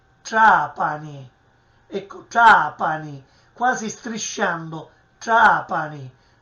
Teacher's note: È sempre un suono cacuminale che proviene dalla retroflessione della lingua all'indietro sul palato superiore.